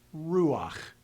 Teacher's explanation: So I'm going to hear the ah sound before I move into the final consonant, simply to smooth out the pronunciation. It's pronounced ruach. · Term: transition vowel